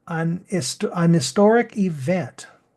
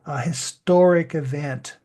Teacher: we would have the n Sound much stronger and the H sound would be swallowed but now we are more clearly pronouncing the H of historic